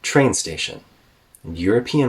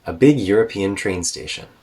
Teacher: European Rises to meet that falling tone before going back down